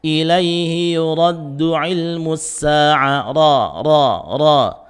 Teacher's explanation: Huruf ra ini memiliki sifat takrir, getarannya cuma 1 sampai 2, ya. Semakin sedikit, yakni getaran 1 semakin baik, tapi jangan sampai tidak bergetar, ya.